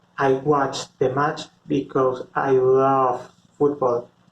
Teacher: in this sentence i make longer the word love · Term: stretch